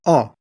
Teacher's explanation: dog and or as in door first o as in dog o is a short vowel the lips are forward slightly but relaxed the jaw is open fairly wide